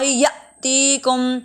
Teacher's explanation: حمزہ ساکنہ جھٹکا دیکھ کے پڑھیں گے